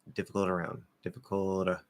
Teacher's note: It's going to be like a really light flapped D, where we're not actually hitting here.